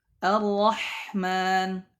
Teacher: Yang pertama, ar-ra'ul maftuhah, nahu ar-rahman, ar-rahman. Ra yang dibaca tebal. Yang pertama adalah ra yang berharakat fathah.